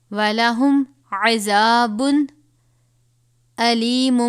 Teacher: تنوین کے بعد حروف ہلکی میں سے حمزہ ہے، یہاں پر غنہ نہیں کریں گے. علیم، ویسے تو لفظ علیمون ہے، لیکن ساتھ یہ جو آپ میم دیکھ رہے ہیں اس کی بجائے ہم اس کو علیموم پڑھیں گے.